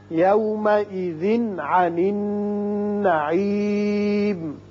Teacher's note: یومئذ تنوین کے بعد عین ہے، یہاں اظہار حلقی ہوگا